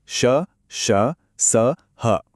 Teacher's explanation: मुंह से हवा एक रगड़ के साथ निकलती है, जिससे एक हल्की सी गर्मी पैदा होती है, इसीलिए ऊष्म। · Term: संघर्षी व्यंजनों